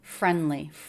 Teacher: Do you notice he pronounced friendly without the D?